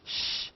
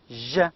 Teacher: of course shh voiceless and je is voiced